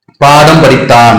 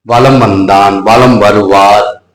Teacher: இந்த மகர மெய் எழுத்துல அதனுடைய மாத்திரை அளவு குறையவே இல்லை அது அப்படியே தான் வெளிப்படுது